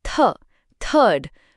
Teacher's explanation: यह द या थ नहीं है। इसे बोलने के लिए अपनी जीभ को अपने ऊपर और नीचे के दांतों के बीच हल्का सा रखें और हवा बाहर निकालें। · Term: थ की आवाज